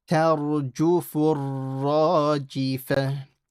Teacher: The ra here is heavy because before it is a fatha. So don't say tarju, tar.